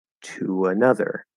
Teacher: when you release that position to go into a vowel sound it's going to sort of sound like there's a little light or small w between the ooh and that vowel